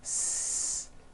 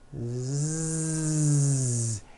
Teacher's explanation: So S has no voicing. S. Z has voicing. Z. So we say the S sound and the Z sound are also paired consonants.